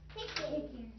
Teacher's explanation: That nasal. Smiling vowel, and then your back nasal.